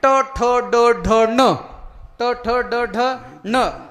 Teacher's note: ट ठ ड ढ न हे उच्चार करत असताना जीभ ही वर टाळूला लागली पाहिजे